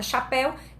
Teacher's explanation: o encontro dessa vogal que é o é e a semivogal aí que é o u tá e elas ficam na mesma sílaba então isso que é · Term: ditongo